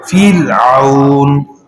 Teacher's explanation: کسرہ اصلی متصل ہو تو را باریک ہوگی